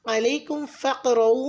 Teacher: अलैकुम फ़क़रऊ में क़ाफ साकिन है, यहाँ पे भी लाइट कलकला हो रहा है।